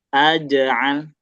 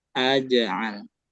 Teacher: Jimnya mantul, lamnya ngalir, gitu.